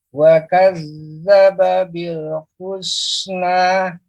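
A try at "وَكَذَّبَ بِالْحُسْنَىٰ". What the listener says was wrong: Husna. Tadi masih agak tebal. Husna. Lebih dibuka lagi, Pak. Kalau dibuka bibirnya, ya, mulutnya. Wa kadzdzaba bil husna.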